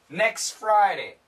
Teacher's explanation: here the S and the F sound kill the T